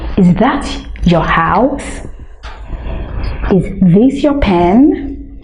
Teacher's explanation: can you see how the voice goes the tone is rising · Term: rising intonation